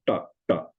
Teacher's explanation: there's a retroflex ta, ta, like in Indian languages